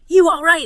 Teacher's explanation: If you apply the rule, the L in all right turns into a W. So it becomes, you all right. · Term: L's turning into W's